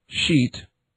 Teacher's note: the voiceless palatal fricative sh as in sheet